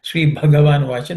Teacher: Sri Bhagavan Vacha, the Bha is aspirated.